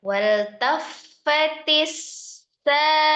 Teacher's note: sinnya juga sifatnya adalah al-hams, ada as-safirnya, ada roghahnya juga ya